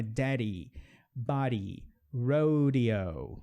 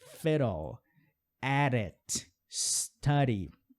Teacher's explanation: Então o som vira r, r. Quando esse fonema do D estiver entre duas vogais.